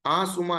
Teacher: આંસુનો સ્વર પોતે નાસિક્ય છે.